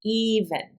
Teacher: we put the accent on the first sound